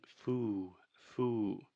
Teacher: she is creating too much of a circle with her mouth at the end of the word, which is creating that ooh sound. In linguistics, we call this lip roundedness.